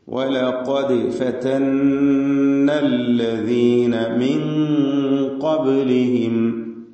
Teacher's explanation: സാക്കിനത്തായ നൂനിനെ ഇഖ്ഫാ ഹഖീഖി നൽകി മണിച്ചുകൊണ്ട്, മറച്ച് മണിച്ചുച്ചരിക്കണം